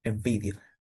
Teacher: Air passes with friction while your vocal cord vibrates. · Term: voice is fricative